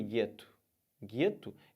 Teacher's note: Esses dois sons ficam como se fosse um som de G só